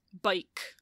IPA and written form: bʌik (bike)